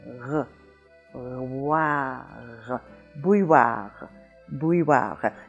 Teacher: it's made in the back of the throat with the tongue rising higher and higher until it hits the back of the soft palate